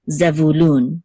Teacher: the accent is on loon which is the last syllable